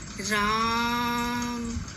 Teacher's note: आ की ध्वनि को 3 गुनी मात्रा तक बढ़ाकर बोलना होगा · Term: प्लुत स्वर